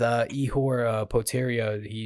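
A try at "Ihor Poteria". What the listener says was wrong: Potieria. You pronounce all the letters like good old American, which he's not, but that's the thing that I just said. It's just in Brazil, you don't pronounce them very often.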